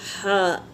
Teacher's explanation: हा पहले हवा खारिज होगी फिर हा का मखरज निकलेगा